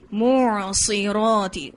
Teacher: میم کے بعد عین، عین کے بعد صاد، پھر را پر ہے اور تا کی باریکی. ٹھیک ہے، کیونکہ زیر ہے اس کے نیچے.